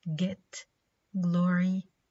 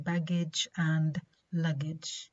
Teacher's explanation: the soft palate of air through the mouth okay and also during this articulation the vocal cords vibrate